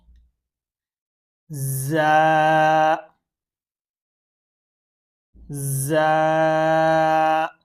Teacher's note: زا جو ہے اس میں نا ہم نے سی ٹی کی آواز نکالنی ہے، جس طرح سی ٹی ہوتی ہے نا ویسل ساؤنڈ، سی ٹی کی آواز نکالنی ہے۔